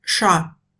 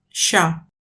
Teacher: Mais de nos jours, ce son ne se prononce plus ch'te. La différence avec cha, c'est qu'il est plus long et palatalisé.